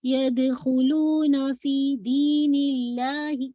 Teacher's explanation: فی بھی 2 کاؤنٹ ہے، یا مدیہ ہے نا